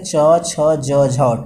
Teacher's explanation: च छ ज झ को क्या कहते हैं, स्पर्श संघर्षी व्यंजन कहते हैं